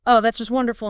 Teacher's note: The rise-fall conveys the opposite of the literal meaning.